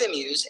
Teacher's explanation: a is unstressed and Muse is stressed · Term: I am